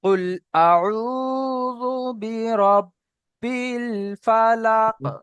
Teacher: রব্বিল ধরে রাখলে একাধিক পরিমাণ টান হয়ে যাচ্ছে, কোনো রকম টান দেওয়ার কায়দা এখানে নাই।